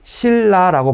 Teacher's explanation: 니은이 리을을 만났으니까 그때는 니은을 리을로 바꿔서 발음하죠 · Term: 유음화